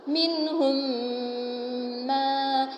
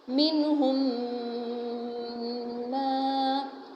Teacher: تو بات کیا ہو رہی ہے ہماری کہ میم ساکن کے بعد اگر میم متحرک آ جائے تو میم ساکن کو میم متحرک میں ادغام کر کے غنہ کے ساتھ پڑھیں گے